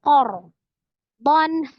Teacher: Ro sukun sebelumnya fathah di huruf qaf ya, maka dia ro-nya dibaca tebal tafkhim